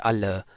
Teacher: For example, when we say al, when we uh, when we read this symbol l, so it means it is a voiced alveolar lateral approximant